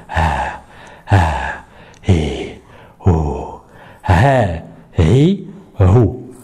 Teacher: On ouvre les cordes vocales, H, Ri, Hu, et on laisse le son sortir. Hein, comme si qu'il y avait un petit souffle.